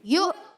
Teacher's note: یا کو حمزہ سے ملائیں گے, یو جھٹکا دیں گے